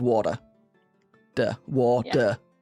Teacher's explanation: in North America uh you if there's uh a T people will replace it with like a D. Like water.